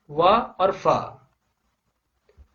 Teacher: इन वर्णों को ओष्ठ्य व्यंजन है। दंतोष्ठ्य व्यंजन जो है निचले ओठ और ऊपरी दांतों से बोला जाता है